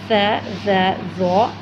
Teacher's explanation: یہ 3 حروف ہیں جن میں سیٹی کی آواز نہ آئے، انہیں نرمی سے ادا کیا جائے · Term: نرمی سے پڑھے جانے والے حروف